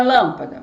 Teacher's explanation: a penúltima é o pa e a antepenúltima é o lan se a sílaba tônica tem como antepenúltima o lan então ela é uma proparoxítona